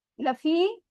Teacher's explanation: या साकिन से पहले जेर आ रहा है, मद और ये 2 काउंट स्ट्रेच करेंगे